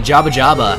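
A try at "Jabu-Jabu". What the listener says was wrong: why do you say Jabba? It's Jabu. There's clearly a U at the end of it. Jabba. sounds too much like Java.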